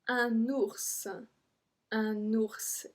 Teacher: So we do pronounce the S.